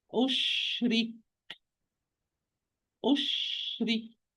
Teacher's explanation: So I have sheen with sukoon, rakh letter. It has the longest time for any non-vowel letter. And kaf is shadid, the least time for any non-vowel letter.